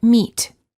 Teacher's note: the lips are slightly smiling tense and not rounded and the tongue is tense it is high and far forward near the roof of the mouth